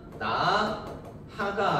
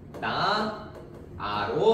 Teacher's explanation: 이 현상의 결과는 어간에 히읗이 탈락하게 된다라고 정리를 할 수가 있게 됩니다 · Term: 히읗탈락